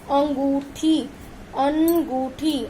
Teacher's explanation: इसकी आवाज आपको आपके नाक से आएगी और मुंह से आएगी